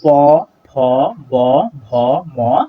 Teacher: তো প্রিয় শিক্ষার্থীরা, আমরা যদি একটু ফিল করে পড়ি প, ফ, ব, ভ, ম, তাহলে দেখতে পাবো এগুলোর উচ্চারণ স্থান একই জায়গা থেকে উচ্চারিত হচ্ছে, এবং এগুলো উচ্চারণ করার সময় আমাদের দুইটা ঠোঁটকে একসাথে লাগাইতে হচ্ছে, অর্থাৎ আমাদের যে বাতাসটা সেটা ঠোঁটে এসে বাধাপ্রাপ্ত হচ্ছে, সেই জন্য এটা হচ্ছে ওষ্ঠ ব্যঞ্জন।